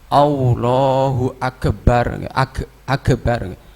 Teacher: Ada juga yang membaca agak seperti qalqalah atau tawalud.